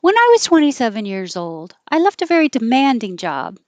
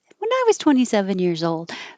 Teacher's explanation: starting high in pitch and stepping down to the end